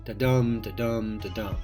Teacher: The most famous kind of rhythmic pattern, however, is the simplest of all. Unstressed, stressed, unstressed, stressed, over and over. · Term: iambic